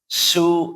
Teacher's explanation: Kalau sin juga mudah. Kenapa? Karena dia jelas banyak anginnya.